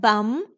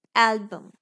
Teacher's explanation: we don't say album with a complete short u sound it's not bum It's Album so this U here is schwa